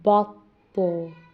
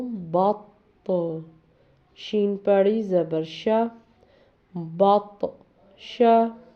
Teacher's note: یہاں پر تو کو موٹا کر کے تو جو حرف ہے وہ ہمیشہ موٹا پڑھا جاتا ہے، اور جزم ہونے کی وجہ سے قلقلہ بھی کریں گے